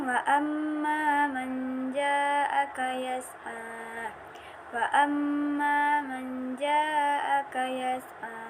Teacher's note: memasukkan suara nun sukun atau tanwin secara samar-samar dengan diikuti suara sengau di hidung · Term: ikhfa